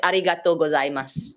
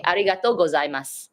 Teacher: because it's combined in a sentence, it just becomes mas